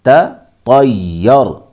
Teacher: پہلے تا ہے، پھر طا اور طا کو ملائیں گے یا کے ساتھ، یا پہ تشدید ہے، یا کو ڈبل پڑھیں گے، پھر یا کو را میں ملائیں گے، تطیر، طا یا زبر طی، یا را زبر یر، تطیر، تطیرنا بکم۔